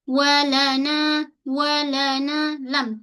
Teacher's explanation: Tepi hujung lidah kita menyentuh pada gusi atas.